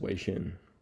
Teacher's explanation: Xin sounds like the English word quote seen, end quote, or quote sheen, end quote. Tone, the first part is high pitch, the second part drops in tone. · It consists of two Mandarin syllables, high level tone, sounds like Wei, and Xin, falling tone, sounds like Xin.